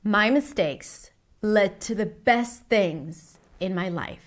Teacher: Notice how she slows down when she says best, and she changes her voice a little bit to emphasize the word. So when you want to emphasize a part in your speech, you tend to do something slightly differently so that people pay attention.